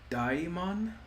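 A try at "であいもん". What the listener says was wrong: No, it's Daimon. Separate all the vowels there.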